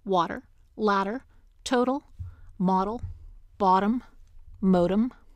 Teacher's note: T and D become the flap between vowels and the onset of an unstressed syllable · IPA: [ wɑɾəɹ ] [ læɾəɹ ] [ tʰoʊɾəl ] [ mɑɾəl ] [ bɑɾəm ] [ moʊɾəm ]